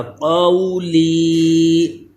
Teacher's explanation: قاف کو پر بھی کریں کہ یہ حروف مستعلیہ ہے